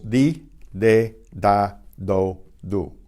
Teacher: it's pronounced like the English D, except that your tongue should touch the upper teeth as well as the gums of your behind your upper teeth. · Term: the letter D